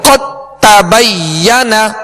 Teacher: میں داخل کر دیا، دال کو تا میں داخل کر دیا، اب دال کی کوئی صفت باقی نہیں رہے گی، دال نہیں پڑھیں گے بلکہ تا ہی پڑھیں گے ۔ قد تبین، یہ ادغام بھی ہے مگر یہ ادغام تام